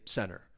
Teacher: a lot of times with the American accent when the T follows an N sound, it's going to collide. It gets removed. You don't really hear it. So, if I were have a word like center, I would just say center. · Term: elide